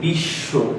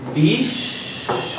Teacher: এই শটা দ্বিত্ব হইছে, দুইবার উচ্চারণ হইছে